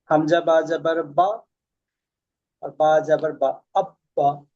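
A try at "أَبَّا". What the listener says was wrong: না না, হয়। এখানে দেখেন, হামজা বাকে প্রথম সাকিন করেন, হামজা বা জাবার আব, বা জাবার বা, আব্বা।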